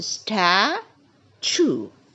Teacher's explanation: we stress on the first three letters stat